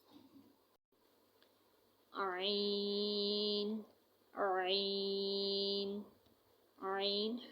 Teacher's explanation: عین حلق کی بیچ سے نکلتا ہے